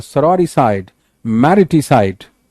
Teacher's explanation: side पे अपने आप जोर आ रहा है